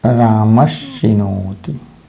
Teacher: दंत्य स के स्थान पर श हो जाएगा और रूप बनेगा रामश्चिनोति।